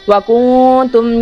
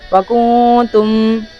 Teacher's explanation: یہاں پر نون میں اخفا کریں گے، ناک میں آواز لے کے جائیں گے تھوڑی سی